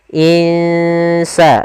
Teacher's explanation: Kita samarkan nunnya ke huruf sin. Insa, dan itu ikhfanya ikhfa tipis. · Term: bacaan ikhfa